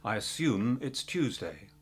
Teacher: the ooh having a Y behind it